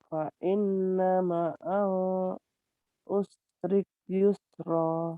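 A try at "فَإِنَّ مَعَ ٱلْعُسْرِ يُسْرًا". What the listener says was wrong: Jangan usrik, usri.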